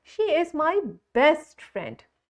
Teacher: I have said the word best louder and stronger. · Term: stress